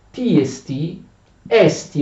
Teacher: è lo spirito dolce, significa che non c'è l'H, non c'è aspirazione, ok, sulla E.